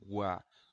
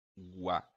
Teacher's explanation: Então, ó, semivogal, depois a vogal. Como o tom da vogal é mais forte, mais alto que o tom da semivogal, dizemos que é um ditongo crescente.